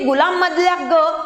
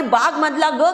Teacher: ते वरवर पाहता आपल्याला एकच स्वन दिसतो आहे ग, पण त्या ग या स्वनामध्ये मात्र अंतर आहे. कारण गुलाममधला ग हा तालव्य ग आहे, बागमधला ग हा स्फोटहीन ग आहे